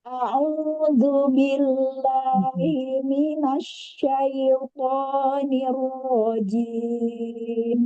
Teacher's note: Perpindahan antara hamzah ke ain itu eh tidak terlalu lama ya, cepat. Satu harakat, satu harakat.